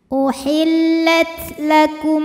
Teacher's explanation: jangan lupa untuk mengeluarkan angin di huruf ta ya kalau Ta ini punya sifat namanya hams Jadi kalau tanya